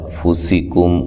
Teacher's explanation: کاف کو باریک میم ساکن کا اظہار ہے ، او وولین ہے، تخفوہ خا کو موٹا ادا کریں گے،